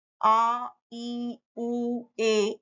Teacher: दीर्घ स्वर जिन्ने बोलने में हस्व स्वरों की तुलना में दो गुना समय ज्यादा लगता है